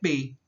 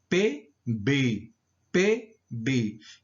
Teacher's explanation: as oclusiva bilabial Surda é pei né Tem um som mais fraco